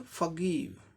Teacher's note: अब नेक्स्ट देखें, एफ का फ साउंड, ओ का अ साउंड, आर साइलेंट क्योंकि इसके बाद कॉन्सोनेंट साउंड आ रहा है, लेटर जी इसका कॉन्सोनेंट साउंड, आर साइलेंट हो गया ब्रिटिश इंग्लिश प्रोनाउंसिएशन में। जी का ग साउंड जो कि कॉन्सोनेंट साउंड है, आई के लिए ई शॉर्ट एंड क्विक ई, और वी और ई 2 लेटर के लिए व साउंड होगा, व साउंड, क्योंकि ई का उच्चारण नहीं होता है, व साउंड।